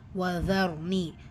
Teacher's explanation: இந்த ரா சுக்கூனுக்கு முன்னாடி ஃபத்தா இருக்கிறதுனால அந்த ரா சுக்கூனை நம்ம வந்து ஹெவியாக சொல்கிறோம். ஒதர்னி ஏமதா இருக்கிறதுனால 2 ஹரக்கத்.